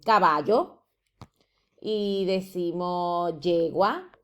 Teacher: el yeísmo, que es el rasgo de pronunciación de ye en lugar de elle